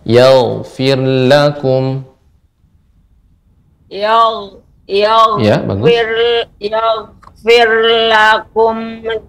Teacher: Yagfir gain mengalir namun dia tebal